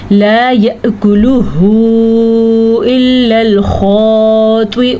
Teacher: लाम ज़बर अलिफ ला, इसको इतना लंबा करना है कि अलिफ मद्दा की आवाज़ वाज़ह हो जाए।